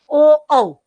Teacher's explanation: કંઠ્યોષવ એટલે શું કંઠ અને હોઠ માંથી